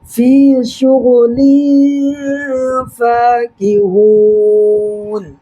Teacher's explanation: دو زر کی تنوین کے بعد حروف اخفا کے 15 حرفوں میں سے فا آ رہا ہے، لہٰذا یہاں پر نون کی آواز کو ناک میں چھپانا ہے